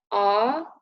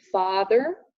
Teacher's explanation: it's central so the tongue goes up in the middle of your mouth and it's a long sound which is also symbolized by the dots behind the sound go